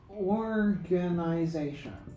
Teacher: But in the word organization, primary stress is on the last syllable. The secondary stress is on the first syllable. The tertiary stress is on this syllable, is on the third syllable.